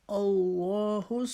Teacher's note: لام جو ہے وہ اس کو موٹا کر کے پڑھیں گے، ایک الف کے برابر لمبا کھینچیں گے